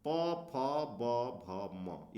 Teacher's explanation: तो ये दोनों ओठ मिल जाते हैं, तो ये ओष्ठ से बोले जाने वाले प वर्ग हैं